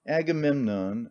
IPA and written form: æɡəˈmɛmnɒn (Agamemnon)